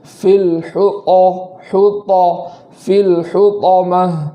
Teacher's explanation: حطامہ جو طا ہے اس کو خوب مضبوطی کے ساتھ پڑھیں گے، ایسا نہ ہو کہ آواز چینج ہو جائے یا ہونٹوں کا سہارا لیا جائے یا واو کا سہارا لیا جائے، ان چیزوں سے پرہیز کرنا ہے۔